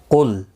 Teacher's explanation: لام ساکن کو ہلانا نہیں، قاف مستعلیہ ہے، پر پڑھا جائے گا